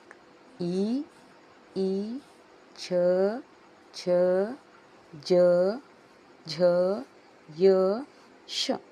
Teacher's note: ತಾಲು ಅಂದರೆ ದವಡೆ, ದವಡೆಯಿಂದ ಉಚ್ಚಾರವಾಗುವಂಥ ಅಕ್ಷರಗಳು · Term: ತಾಲಕ್ಷರಗಳು